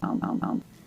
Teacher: It's so low in pitch, so low in volume, so far down in the throat.